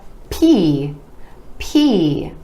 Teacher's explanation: our e vowel sound coming after the consonant where the lips come together